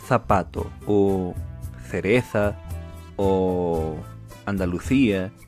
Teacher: E a última é a pronúncia do C e do Z, que a nível geral, na América Hispânica tem som de C cedilha e na Espanha tem um som muito parecido ao TH do inglês